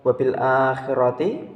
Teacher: Di situ terdapat hukum bacaan mad badal karena adanya huruf hamzah bertemu dengan huruf mad dalam satu kalimat, dan cara membacanya panjang 2 harokat.